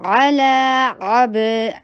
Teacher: با کے پر قلقلہ، با کی آواز باؤنس ہوگی